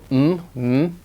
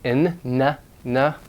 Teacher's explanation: open so that air can go up through the nose and air is released through the nose and it's usually voiced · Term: nasal sounds